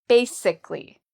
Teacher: Bay is the first part, and that's where the stress is. So we say bay louder and longer. Bay sick, like sick.